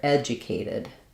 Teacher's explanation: the correct syllable stress is to stress the ed syllable